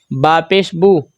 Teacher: پیش کو ہونٹوں کو گول کر کے پڑھیں گے یعنی کہ گول آواز کے ساتھ ہم اس کو ادا کریں گے